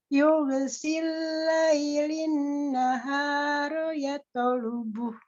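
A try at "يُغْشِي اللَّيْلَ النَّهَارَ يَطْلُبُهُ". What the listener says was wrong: Oke, alhamdulillah.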